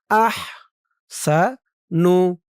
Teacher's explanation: আহ হার আওয়াজটা গলার ভিতর থেকে চিকুন হয়ে বের হবে।